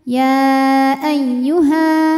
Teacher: hukumnya adalah Mad Thobi'i karena ada Alif didahului baris fathah maka Kalau berhenti panjang dua harakat tapi kalau terus pendek gugur madnya